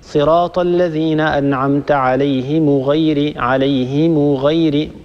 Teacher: فهناك خلط، وهذا يكثر الخطأ فيه، خلط بين الصلة وبين ضم ميم الجمع، فتجد من يريد أن يقرأ بصلة ميم الجمع وفي حقيقته يضم ميم الجمع، يعني يقرأها كذا صراط الذين أنعمت عليهم غير، عليهم غير، الميم مضمومة فقط ولا يصلها بواو